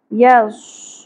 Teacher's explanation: یس صاد پر ہوگا سیٹی کی اواز ائے گی